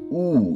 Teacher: একটি পশ্চাৎ অর্থাৎ জভার পেছনের অংশ ঠোট গোলাকৃতি থাকবে · এবং ও হচ্ছে একটি পশ্চাৎ, যেহেতু আমাদের জিহ্বার পশ্চাৎ থেকে ও, গোলাকৃতি, ঠোঁট গোল হয়ে যাবে, উচ্চ মধ্য, জিহ্বাটা হচ্ছে উপরের দিকে মধ্য এবং অর্ধ সংবৃত, মাঝামাঝি থেকে উচ্চারিত হবে ও। এবং উ হচ্ছে একটি পশ্চাৎ, অর্থাৎ জিহ্বার পেছনের অংশ, ঠোঁট গোলাকৃতি থাকবে, উচ্চ, মানে উচ্চ বলতে ঠোঁটের অবস্থান, জিহ্বার অবস্থান থাকবে উচ্চ এবং সংবৃত স্বরধ্বনি উ, এটা বাইরের দিকে।